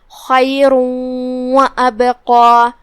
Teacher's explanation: یہاں حکم ہے ادغام بغنہ، جو کہ تنوین کی اصلیت اور اس کی ادائیگی نون ساکن ہوتی ہے، لہذا ہم یہ تنوین کو واو میں داخل کر کے غنہ کے ساتھ اور تشدید کے ساتھ یہ حکم کو ادا کریں گے · کلمت وابقى میں یہاں حمزت قطع ہے، لہذا ہم اسے ظاہر کریں گے اور حمزہ کی ادائیگی حلق کے نیچے والے حصے سے ادا کریں گے